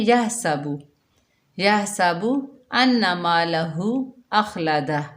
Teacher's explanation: ہا کو حلق کے درمیان سے ادا کرنا ہے، ہا کی جگہ ہا نہیں پڑھنا، کیونکہ ہا جو ہے حلق سے ادا ہوتی ہے۔